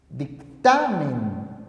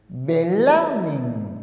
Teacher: La mayor fuerza de voz se encuentra en la penúltima sílaba. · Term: graves o llanas